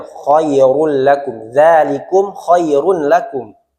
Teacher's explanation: Maka tanwin ini, dhammatain, bertemu dengan lam, dileburkan ke huruf lam tanpa gunnah. Tidak boleh khairul lakum, ditekan terlalu lama. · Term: idgham bila gunnah